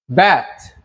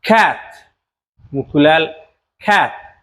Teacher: waxoogaa wuu yara fidsan yahay shaqal dheerna ma ahan dhawaqiisna waxoogaa a'deena caadiga camal waaye waxaan leenahay a sida bat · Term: short single vowel sounds